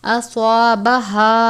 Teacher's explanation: سواد کو بھی پر پڑھتے ہیں، سواد بھی حروف مستعلیہ میں سے ہے، سین کی طرح نہیں پڑھنا یا سا کی طرح بھی نہیں پڑھنا، سواد کو پر پڑھنا ہے، الف سے پہلے زبر ہے الف مدہ، یہاں پر بھی الف سے پہلے زبر ہے الف مدہ۔